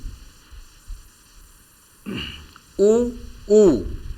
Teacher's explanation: उ के उच्चारण में मुंह गोल हो जाता है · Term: वृत्ताकार स्वर